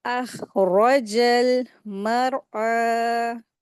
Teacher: अखरजल मरअ, तो रॉ को यहाँ पर सुकून के साथ आया है तो इसको हैवी करके पढ़ेंगे, रा साकिन से पहले जबर आई है तो रा को हैवी करके यहाँ पे रीडिंग करा जाएगा।